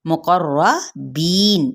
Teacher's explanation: यहाँ पे रॉ पुर पढ़ा जाएगा, बी पे मद्दे बिल या का कायदा, नून पे वक्फ किया तो वक्फ बिल इस्कान।